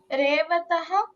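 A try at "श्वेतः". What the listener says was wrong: ರೇವತಃ ಅಲ್ಲಮ್ಮ, ಅದು ಶ್ವೇತಃ. ಶ ಹಾಫ್ ಶ ಇದೆ.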